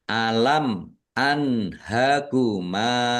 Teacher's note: Mim sukun bertemu dengan huruf alif. Bacaan izhar syafawi dibaca jelas. · Bacaan izhar syafawi dibaca jelas. Nun sukun bertemu dengan huruf ha. Bacaan izhar dibaca jelas juga.